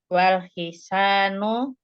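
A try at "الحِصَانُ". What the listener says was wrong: Hisonu. So. Laisa sa. So. Wal hisonu kabirun.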